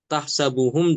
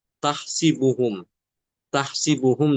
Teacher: Itu bacaan Imam Hafz ya. Untuk Imam Alqisai dia mengkasrkan sin.